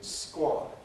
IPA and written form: skwɒd (squad)